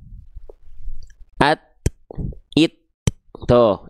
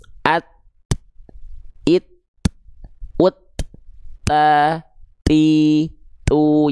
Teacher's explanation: ketika dia nempel tuh ketahan suaranya at. Tapi ketika dia lepas keluar percikan nafasnya.